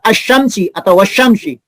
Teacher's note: Sehingga kata tersebut dibaca asyamsi atau wasyamsi. Itu karena alif lam al melebur ke dalam huruf shin. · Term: idgham syamsiah